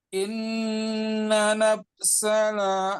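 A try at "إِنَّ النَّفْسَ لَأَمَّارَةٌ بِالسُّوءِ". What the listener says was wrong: Innannya 2 kali. Innan nafsala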